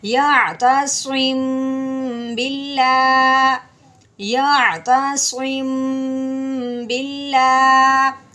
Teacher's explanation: ہونٹوں کو ایک دوسرے کے ساتھ نرمی کے ساتھ ملائیں گے اور ساتھ دبائیں گے نہیں، اور ملاتے ہوئے پھر ہم غنہ بھی کریں گے۔